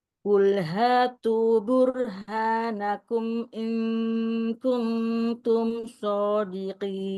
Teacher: di izhar syafawi jangan terlalu lama, hanya menampakkan sifat tawassut aja dan sifat gunah sedikit